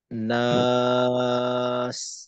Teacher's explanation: আর শেষে নাস মাদ্দা আরজি, তো আমরা তিন আলিফ সময় নেব।